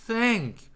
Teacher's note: 자, 그 다음에 이제 th 굉장히 어려운 발음인데, th는 치아에 바로 뒤에다가 혀를 대고 하는 겁니다. 바람을 불면서 목이 안 울려야 됩니다.